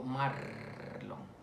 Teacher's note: es alveolar según su punto de articulación, y según el modo de articulación es una vibrante. Marlon, según el modo es vibrante.